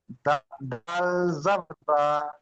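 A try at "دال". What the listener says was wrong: সেখানে বলেছিলাম, এই দালের উচ্চারণটি দাল মাঝখানে টানটা দিতে হবে, দ এবং লামের মাঝখানে, শেষে নয়।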